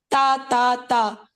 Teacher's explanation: آپ کے زبان کا اوپر کا کافی حصہ جو ہے وہ لگ رہا ہے مسوڑا سے، گم لائنز آف دا انسیزرز